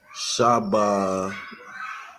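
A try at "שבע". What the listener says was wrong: I can see why you'd say ba, but that's not a ba. Shanya.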